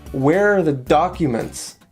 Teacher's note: we have a stress on where and a stress on the first syllable in the word documents